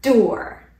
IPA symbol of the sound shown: d